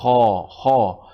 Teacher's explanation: ঠিক একইভাবে যদি দেখেন আপনি, খা জবর খা নয়, খা জবর খ, খ, মুখটা আপনার রাউন্ড হয়ে যাবে, আপনার ফুল মাউথে অ সাউন্ড প্রধান করে উচ্চারণ করবেন। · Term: হেভি লেটার্স